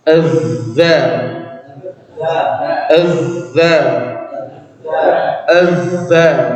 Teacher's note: Sumber suaranya dari benturan ya gigi kita yang atas dengan ujung lidah yang tertempel gitu. Ini lidah, ini gigi kita yang nabrak ke situ.